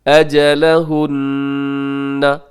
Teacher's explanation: یہاں نون مشدد ہے تو یہاں پہ کیا ہوگا جی، غنہ ہوگا